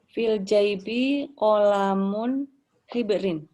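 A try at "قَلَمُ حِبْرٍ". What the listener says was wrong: Kolamu hibrin ya, benar ya. pakai domah ya, bukan pakai domaten ya.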